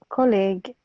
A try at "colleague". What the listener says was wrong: Yes, but make the E long. Longer.